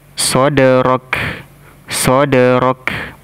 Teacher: Dal sukun maka dipantulkan sifatnya Qalqalah